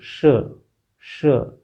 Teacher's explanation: जीभ को थोड़ा सा मोड़ा और तालु से स्पर्श किया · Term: ऊष्म व्यंजन